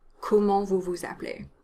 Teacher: the E sound is in between 2 consonants in this question, and in spoken French, the E gets dropped.